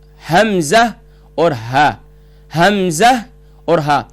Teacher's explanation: اقصی حلق یعنی جو سینے کی طرف والا باٹم آف تھروٹ، یہاں سے بھی 2 حروف ادا ہوتے ہیں